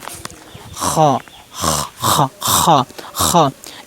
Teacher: খ হরফ উচ্চারণ স্থান গলার শেষ ভাগ হইতে উচ্চারণ হবে, মানে গলার শেষ ভাগ আমি কীভাবে এই যে হলকের শেষ হইতে উচ্চারণ হয়।